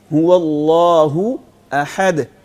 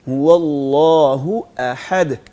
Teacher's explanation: ہم نے هو اللہ احد یعنی حمزہ اور ہاں کو دونوں کو الگ الگ واضح کرنا ہے, چونکہ ان دونوں حروف کا مخرج بھی ایک ہی ہے. جی, حمزہ اور ہاں ایک ہی جگہ سے ادا ہوتے ہیں, تو اس لیے اس کو مکس نہیں ہونے دینا, ہم نے دونوں کو واضح کرنا ہے.